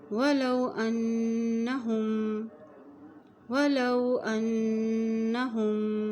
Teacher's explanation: वलौ अन्नहुम, यहाँ देखिए अलिफ की ज़बर को नून के साथ मिलाएंगे क्योंकि नून के ऊपर शद है, और जब नून के ऊपर शद आती है तो वहाँ गुन्ना भी किया जाता है।